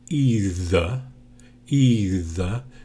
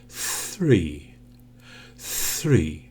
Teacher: there's no vibration in your voice